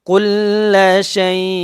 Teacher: হরফ এইজন্য এখানে এফা করে পড়তে হবে কেমন শব্দের অর্থ হচ্ছে অস্পষ্ট করে পড়া অথবা গোপন করে পড়া বাংলাতে অনুস্কারের মত উচ্চারণ হবে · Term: গুন্না